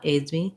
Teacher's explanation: We might, if I'm saying he aids me a lot, aids me, I am using a Z there, but it does end up sounding like a light, short S. So I don't want aids with a strong S, but I also don't need aids with a long, strong Z.